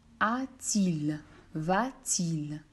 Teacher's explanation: l'apparition d'un t phonique dans la forme comme a-t-il